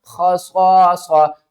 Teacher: ہم نے یہاں پر وقف کیا تو تا کو ڈراپ کر دیا، دو پیش کو ڈراپ کر دیا، ہا کو ساکن کر دیا، اور ہا کے اوپر ہم نے جزم لگا دی۔